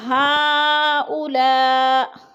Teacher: ہا پہ مد متصل ہے، چار الفی مد ہے، چار الف کے برابر ہم نے اس کو کھینچ کر پڑھنا ہے